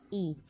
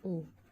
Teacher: Berikutnya, menurut peranan bibir dapat dibedakan antara lain yang pertama vokal bundar dan yang kedua vokal tak bundar. Contoh dari suatu vokal tak bundar I, bila vokal tersebut dibundarkan menjadi U.